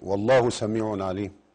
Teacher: سميع عليم هنا في إظهار حلقي التنوين بعد حرف العين